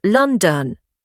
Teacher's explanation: London becomes London. If you are listening for a strong O in London, you will never find it.